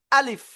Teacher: আলিফ মুখের খালি জায়গা থেকে উচ্চারণ করতে হবে, কোনো টান হবে না।